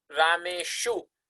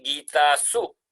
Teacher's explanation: then sakara, the dental sakara, will change to cerebral shakara.